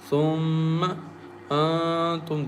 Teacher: meme has shadda on it, and we recite with nasal sound